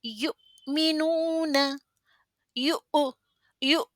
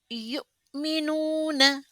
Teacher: حمزہ سکون لیتا ہے تو وتھ اے جرکنگ ساؤنڈ کے ساتھ ہم کو پڑھنا ہے